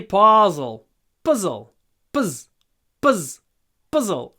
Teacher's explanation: you need to go quickly from the P to the Z